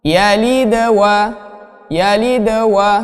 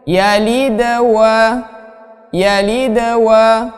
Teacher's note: qalqalah pada tengah ayat itu hanya dia bacanya seperti mengalir saja, tetapi tetap dia memantul.